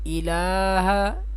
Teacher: اس حمزہ کو اس لام کے ساتھ ملائیں گے اور لام کو 3 الف کی مقدار یا 4 الف کی مقدار کھینچ کر پڑھیں گے